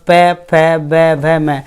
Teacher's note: ओष्ठ यानी कि होठों से हमारे स्पर्श होगा तब इनका उच्चारण होगा, बिना होठों का उच्चारण नहीं हो पाता। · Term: ओष्ठ्य व्यंजन